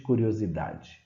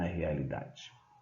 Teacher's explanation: curiosidade irrealidade são paroxítonas porque a sílaba tônica é a penúltima